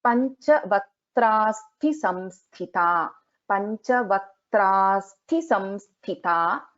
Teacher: So in Vaktrasthi, Tha is a Mahaprana, again samsthita, Tha is a Mahaprana.